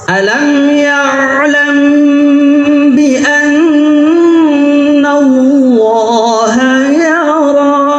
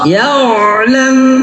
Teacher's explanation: Huruf ain, wastul halqi, makhrajnya di tengah tenggorokan. Ketika menyebutnya ada getaran di sini.